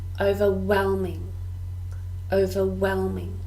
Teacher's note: four syllables and we stress the third